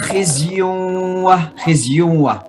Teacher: Ada guna ketemu dengan wa, idgham bi gunnah.